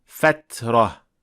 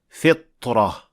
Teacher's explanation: Ko'rishimiz mumkinki, ta va to aslida juda o'xshash va bir xil joydan chiqadi. Faqat ta ingichka talaffuzli tovush, to esa yo'g'on talaffuzli tovush.